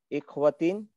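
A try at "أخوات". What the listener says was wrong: अखवातिन, हमजा के ऊपर जब अलिफ, यानी अलिफ के ऊपर जब हमजा लिखा रहेगा तो वो इख्वा कसरा कभी नहीं हो सकता, फतहा रहेगा या दम्मा रहेगा।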